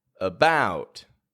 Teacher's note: they make it real weak and real quiet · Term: schwa